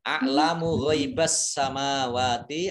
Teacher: alif lamnya alif lam syamsiyah tidak dibaca, langsung masuk ke huruf berikutnya yaitu sin, ditandai dengan ada tasdid.